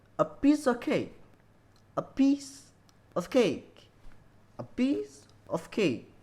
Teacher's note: Jadi penempatan stressnya ada di syllable kedua dan terakhir.